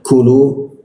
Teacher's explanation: huruf ka ya, di siku tenggorokan lidahnya kita turunkan